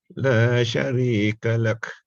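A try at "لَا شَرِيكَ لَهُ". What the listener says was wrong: I'm sorry, sir, but I think it should be La Sharikalah. I heard Kalah just now.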